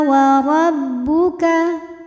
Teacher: huruf ra dibunyikan secara tafkhim karena berbaris fathah, maka dibacanya tebal